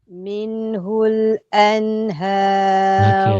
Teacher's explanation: nun mati dua tu kan sama mesti sama panjang dia